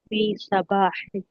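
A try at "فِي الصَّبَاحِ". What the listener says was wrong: جی اس کو فی الصباح ہی پڑھیں، فی صباح نہیں، فی الصباح.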